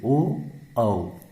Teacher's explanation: होंठ का भाग कंठ प्लस जीभ प्लस कुछ होंठ के स्पर्श से